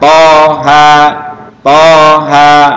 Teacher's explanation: Kalau ini 2 saja, H dan alif. Panjangnya 1 alif, hanya 2 ketukan.